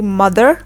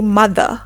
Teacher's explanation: in American English, we pronounce the R like mother, and in British English, we do not pronounce the R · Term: R sound